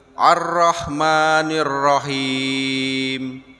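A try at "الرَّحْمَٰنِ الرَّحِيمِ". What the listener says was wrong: Agak panjang ini, dipendekin saja. Ini lebih panjang. Ya, jadi Ar-Rahmanir Rahim. Dipendekin lagi. Bukan Ar-Rahman. dipendekin. Betul, tapi ada huruf ha dan huruf ra tasydid itu yang di atasnya tasydid. Ar-Rahman. Ar-Rahman. Ya, masih ada Ya, panjang. Jadi dipendekin lagi.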